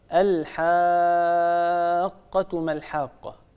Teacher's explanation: عندنا حرف مد وبعده حرف مشدد وهو القاف، والحرف المشدد هو يتألف من قافين، أولاهما ساكنة وثانيتهما متحركة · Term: المد اللازم